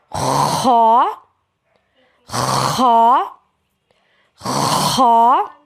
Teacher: خا حلق کا وہ حصہ جو منہ کی جانب ہے وہاں سے ادا ہوگا۔ خا جس کو ادنیٰ حلق بھی کہتے ہیں۔